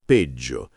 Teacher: Sulla pronuncia attenzione alla doppia G in peggio. Va marcata bene